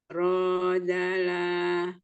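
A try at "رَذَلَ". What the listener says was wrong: Rozala. Rozala. Lanya pendek. Zal bukan da, za. lidah ada di ujung gigi seri bagian atas. Keluarkan ujung lidahnya sedikit.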